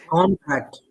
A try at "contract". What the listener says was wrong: Uh, Other way around. Contract. You're pronouncing the same. Remember that when you are stressing, that stressing part should be another technique, a bit longer sound. Like, okay, contract and contract.